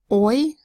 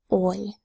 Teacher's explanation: oi is a diphthong, a gliding speech sound